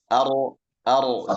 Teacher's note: berbelok ke tengah ya karena apa karena ada celah di tengah ketika kita mengucapkan huruf ro ar ar ar seperti ada ada lubang di situ. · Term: inhiraf